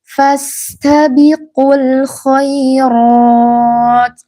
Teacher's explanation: ini sin sukun ini digabung hamasnya dengan hamasnya huruf ta. Jangan terputus, jangan fastabiqu.